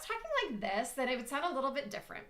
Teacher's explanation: my voice goes a little bit higher